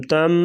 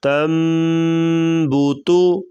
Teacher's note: یہ نون نہیں پڑھیں گے، نون کو میم سے بدل دیں گے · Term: اقلاب